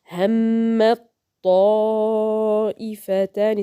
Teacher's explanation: Both have same makhraj from the top side of the tip of the tongue and the gum line of the two front incisors.